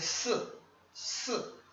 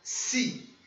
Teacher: Só que o SI, ele vai ter uma característica parecida com o ZI, quando eu falei no outro vídeo, que a gente não pronuncia esse I como um I mesmo firme. É mais um mudo